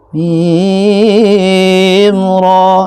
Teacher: Terus mim ke ro itu ada yang dengung. Mim ro itu salah. Enggak ada dengungnya.